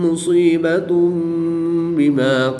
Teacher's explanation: پیش کی تنوین کے بعد حرف با ہے تو یہاں پر اقلاب ہوگا، یعنی تنوین کو میم سے بدل کر غنہ زمانی کر کے پڑھیں گے۔